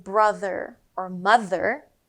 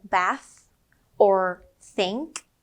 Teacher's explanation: When it's loud, like in brother or mother, you will feel a buzz in your throat, right here. But when it's quiet, like in bath or think, there is no buzz. It's just a soft airflow coming out of your mouth. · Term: TH sound